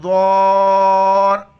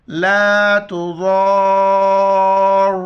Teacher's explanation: وسعها، لا تضار، ضاد کو موٹا کر کے پڑھیں گے اور مد کی وجہ سے 4 الف کی مقدار کھینچنا ہے اور را کے ساتھ ملائیں گے